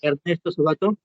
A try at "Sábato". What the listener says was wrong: Ernesto bueno, debemos pronunciarlo como Sábato, ¿no? Algunos, como su compañero le dicen Palma, le dicen Sabato, porque no lleva tilde. O sea, se debería llevar tilde porque sería esdrújula, ¿no? Sábato. Pero hay un detalle, ¿no? El apellido es italiano. Entonces, no, su pronunciación no se ajustaría al castellano, ¿no?